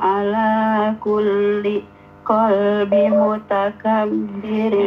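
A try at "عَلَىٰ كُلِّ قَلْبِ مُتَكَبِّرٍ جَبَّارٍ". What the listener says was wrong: Ya, tanwinnya ya. Ala kulli qalbim. Ada tanwin.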